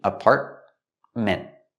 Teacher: with apartment, you have the T in the middle, is a stop T